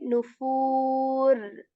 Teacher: I'm stretching the foo here for two counts again because of vaw madda